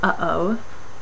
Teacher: the glottal stop which is the sound from uh oh um uh oh you can feel the construction in the back